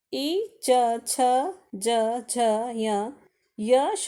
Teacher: ई, च, छ, ज, झ, य, श का उच्चारण स्थान क्या है, तालु है